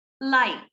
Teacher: The final consonant, no se siente una vibración because it's unvoiced.